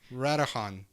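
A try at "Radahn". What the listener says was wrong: It's probably a silent H. Radin. Radon. Radon. You don't have to say them exactly.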